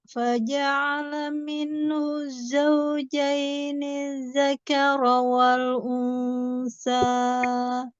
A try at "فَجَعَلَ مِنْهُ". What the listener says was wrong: Perhatikan, faja'ala pendek semua. Faja'ala minhuz. Ya, jadi jangan faja'ala, jangan ada yang naik di situ. Minhuz